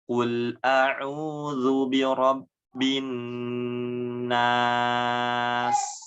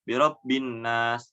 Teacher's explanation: Huruf nun yang bertasydid itu ditahan terlebih dahulu. Dengan gunahnya dengan ditahan lama ya. Tidak sebentar. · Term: gunah huruf nun tasydid